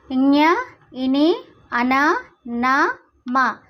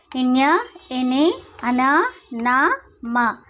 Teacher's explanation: మనం ఈ అక్షరాలు పలుకుతున్నప్పుడు ముక్కు ద్వారా గాలి అనేది బయటికి వస్తుంది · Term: అనునాసికాలు